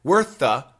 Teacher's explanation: in this case the two th's combine and we don't hear worththe we hear worth the